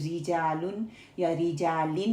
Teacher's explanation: Originally را پہ جو ہے کسرہ ہوگا، وچ از اوریجنل کسرہ. را کو ہم لائٹ پڑھیں گے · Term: ترکیق